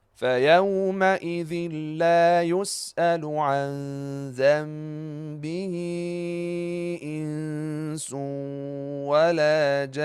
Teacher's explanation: So, the noon at the last word that has shaddah, it's the last letter and still we have to apply ghunnah for it. Again, wal la ja an for two beats.